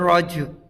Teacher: یہاں حروف قلقلہ ہے تو آواز ٹکرائے گی تھوڑی سی